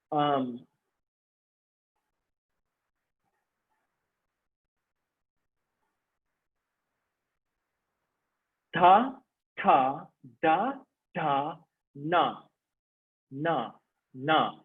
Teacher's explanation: The tongue is touching behind the teeth.